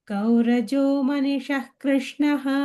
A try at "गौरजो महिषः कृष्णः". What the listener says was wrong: मणि नो महि.